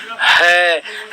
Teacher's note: है में वायु का निकास ज्यादा है तो कौन सा प्राण हो जाएगा बेटा महाप्राण हो जाएगा